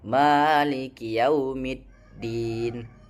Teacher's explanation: Ada hembusan angin. Seharusnya suara tertahan kuat tanpa udara keluar. Maiki yaumiddin. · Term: huruf dal